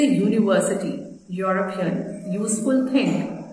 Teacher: यूरोपियन की sound भी य से स्टार्ट हो रही है, which is a consonant sound.